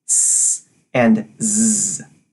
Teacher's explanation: Touch your throat and make the S and Z sound, S and Z. You should feel your throat buzz for Z, but not for S.